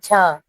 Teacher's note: तालव्य, महाप्राण, सघोष व्यंजन वर्ण